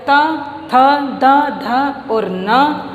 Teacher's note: इन सब का उच्चारण दांत से होता है, इसलिए इनको दंत्य वर्ण कहा जाता है